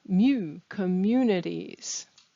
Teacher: The word community has the stress in the middle